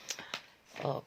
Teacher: de-nya di bagian belakang kan terdengar banget ya, terdengar sekali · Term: kolkola kubro